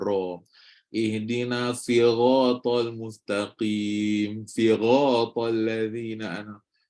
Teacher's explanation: membaca huruf ra ni seperti Huruf Gin atau dengan suara yang penuh dalam mulut